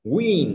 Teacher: Thì môi nhọn ra và đóng mở và đóng lại. Thì môi nhọn ra này và đóng lại phải đồng thời đẩy hơi ra.